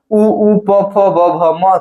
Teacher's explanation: ओष्ठ से होता है आपका ह्रस्व उ और दीर्घ ऊ का उसके बाद प वर्ग का